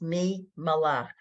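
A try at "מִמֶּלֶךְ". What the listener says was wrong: Me, don't do accents yet. Don't give this syllable an extra.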